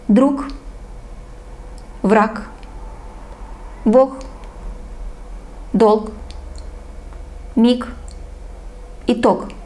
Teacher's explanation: this letter is gamma, g, but we pronounce at the end k.